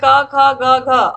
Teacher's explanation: जिनका उच्चारण कंठ के स्पर्श से होता है वे क वर्ग के ही ध्वनियां है